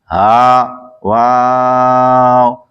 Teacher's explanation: واو دونوں ہونٹوں کی گولائی سے ادا ہوتا ہے · ہا حلق کے نیچے سے ادا ہوتا ہے